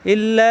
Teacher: মাদের হরফের বামে আসছে লম্বা হামজা এজন্য তিন আলিফ টান হবে আর উপরে তিন আলিফ টান সংকেত আছে ইল্লা হামজা মিলবে নুনের · আলিফ টান জুনু বাজা পড়বো জুনুবা হামজা ইম মিলবে লামের সাথে লামে তাসদিদ দুইবার পড়তে হবে